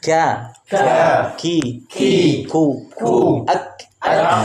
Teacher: jadi ka itu ke depan sedikit antara langit-langit lunak dan atas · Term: Kaf